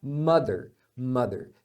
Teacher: é um er mais suave mas é o mesmo er quando é numa sílaba átona muitas vezes eles vão usar um símbolo diferente igual de mother